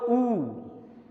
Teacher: जब आप बोलो ऊ, तो होठों का आकार देखो गोल हो जाता है, ठीक है। ऊ मतलब पूरी तरह से होंठ सिकुड़ करके गोल हो जाते हैं सर।